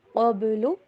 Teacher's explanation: من قبل، با کے اوپر کلکلا